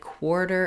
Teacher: the beginning of the word quarter with very clear w glide